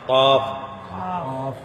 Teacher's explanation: زبان کی جڑ، زبان کی جڑ اور تالو کا نرم حصہ، اس سے 2 نقطوں والا قاف ادا ہوتا ہے، قاف۔